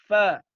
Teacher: Tengah bibir bagian bawah bertemu ujung gigi seri bagian atas.